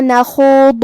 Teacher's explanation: ضاد بھی حروف التفخیم میں سے ہے، تو ہم یہ حرف کو بھاری آواز میں منہ پھلا کے پڑھیں گے، اور جو کہ اس پہ پیش ہے لہذا ہمیں پیش کو ظاہر کرنا ہے. · کلمت نخوض، خا کو ہم حلق کے اوپر والے حصے سے پڑھیں گے. خا حروف التفخیم میں سے بھی ہے، تو ہم یہ حرف کو بھاری آواز میں پڑھیں گے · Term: حرف الضاد